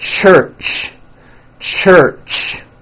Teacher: it's an unvoiced sound and you can hear the sound for example at the beginning and at the end of the word church · it's a combination of the T sound and the SH sound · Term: CH sound